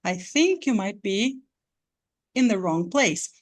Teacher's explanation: essa pausa ela dá uma volta na entonação você sobe a a entonação da voz e depois cai